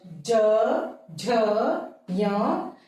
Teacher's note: इनको बोलते समय गूंज उत्पन्न हुई तो ये घोष वर्ण